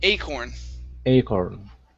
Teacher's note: stress at the beginning